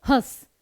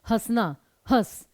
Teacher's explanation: हस में आप सिर्फ गले से बोल रहे हैं आप नाक से ज्यादा नहीं बोल रहे हैं सिर्फ नाक से हल्की सी न की ध्वनि निकालिए नहीं तो